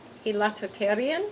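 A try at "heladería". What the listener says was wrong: Not H. Silent. Heladeria.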